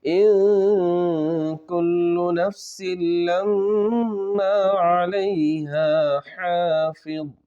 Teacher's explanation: یہاں پر اخفا ہوگا، نون کی آواز کو ناک میں چھپا کر پڑھنا ہے